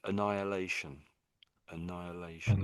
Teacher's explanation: it's almost to me that the H is silent · So it's almost as if the H isn't there at all in a way.